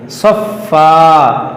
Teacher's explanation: اگر یہاں وقف کر دیں گے تو اس دو زبر کو الف سے بدل دیں گے